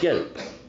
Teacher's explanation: red and yellow share the same front unrounded, half-open vowel e